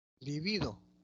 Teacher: Libido, la tónica es bi. Es grave.